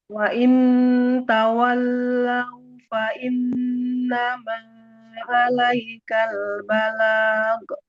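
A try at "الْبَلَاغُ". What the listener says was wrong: Tidak balag. Huruf ghain tidak memantul. Balag. Balag. Nggak ada e-nya. Balag.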